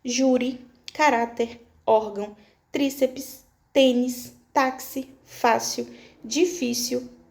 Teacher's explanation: A maioria mesmo das palavras são paroxítonas porque tem a sílaba tônica como a penúltima, é aquela que vem antes da última